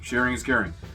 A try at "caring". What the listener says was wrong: It's not Karen. Caring. No, not Karen. Caring.